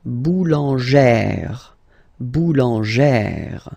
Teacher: you pronounce it like E, really open E sound